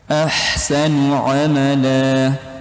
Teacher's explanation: ha ini ha tipis, bukan ha tebal